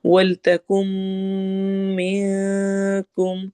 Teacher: ولتکم یہاں پر ہم نے ادغام غنہ کرنا ہے، کم کو لمبا کرنا ہے، اور میں نون کی آواز کو چھپانا ہے